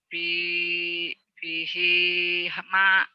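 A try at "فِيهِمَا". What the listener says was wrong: Fi-nya panjang, ma-nya panjang. Fihima.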